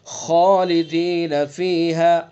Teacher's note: خا حروف مستعلیہ میں سے اس لیے خا کو پر پڑھیں گے